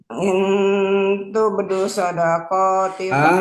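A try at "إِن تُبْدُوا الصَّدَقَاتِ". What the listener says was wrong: Dus, ada alif lam kan? Ada alif lam soundnya, jangan sampai hilang.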